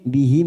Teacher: bihim mim sukun bertemu sin, idhar safawi, kita baca jelas